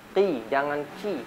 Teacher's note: huruf kaf ketika kasroh ya. Masih tetap tebal. Jangan sampai dia dibaca tipis. Kalau tipis seperti huruf kaf. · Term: tafkhim nisbi